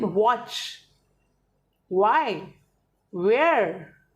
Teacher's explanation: लेकिन जब आप W बोलते हैं तो वो आपको लिप्स राउंड करके ही प्रोनाउंस करना है